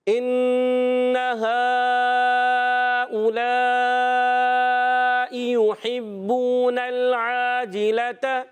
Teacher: ان نون مشدد ہے نا، ذرا رک کر ادا کرنا ہوتا ہے، غنہ ایک الف کا کرنا ہے